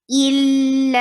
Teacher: Give a medium flow of sound on lam and keep this hamza very strong and clear and short, and there will be e sound. Why? Because there is kasra.